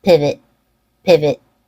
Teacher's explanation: an e sound in pivot the V you can hear how it has a reduced vowel so there's no o sound there's no length on that syllable you just want to be short with a reduced vowel pivot